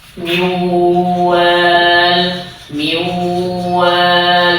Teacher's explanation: Ada tempo di sana, agak lama gitu. Karena dia dibaca gunnah.